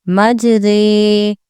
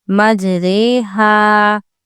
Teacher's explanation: یہ رو مجہول پڑھی جاتی ہے، جیسے اردو میں ہم پڑھتے ہیں اندھیرے، سویرے، قطرے۔ رو کو یا کی ساؤنڈ میں کھینچ رہے ہیں · اس کی ہجے ایسی ہوگی میم جیم زبر مج، رو امالہ والی رے، مجرے، ہا الف زبر ہا، مجریہا۔ رو کو بڑی یا والی آوازیں پڑھیں گے۔ یہ اکلوتا کلمہ ہے قرآن پاک میں جس پہ یہ امالہ والی رے کا قاعدہ آیا ہے۔